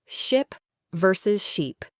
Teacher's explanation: Exaggerate the smile for the long E at first, ship versus sheep. Hear the difference in length and tension?